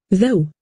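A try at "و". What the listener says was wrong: Да что за джоу? Нужна ва.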